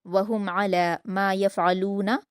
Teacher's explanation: इसमें भी आपको लास्ट में दाल पर कलकला करना है, और वहुम में मीम साकिन के बाद आइन है तो इजहार शफ़वी होगा, मीम साकिन की आवाज़ को जल्द पढ़ेंगे